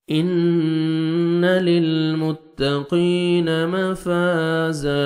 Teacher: جب سٹاپ کریں گے تو زن کو الف مدہ ہو جائے گا، زا زبر الف زا، اور زا کو زور سے پڑھنا ہے، 1 سیکنڈ کھینچنا بھی آپ نے